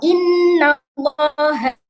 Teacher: inna itu gunnah, itu dengungnya harus 2 atau 3 harokat